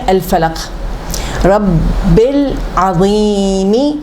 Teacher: یہ ہے حروف قمری, عین ہے حروف قمری, تو اس کے پہلے لام واضح ہونا چاہیے